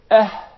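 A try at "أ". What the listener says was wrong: Do not prolong it, because we're going to learn about the med letters or the prolongation letters.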